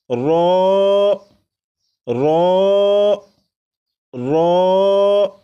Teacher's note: را کو 1 الف کے برابر کھینچ کر پڑھیں گے، جیسے رو رو رو، 4 مرتبہ پڑھے گا۔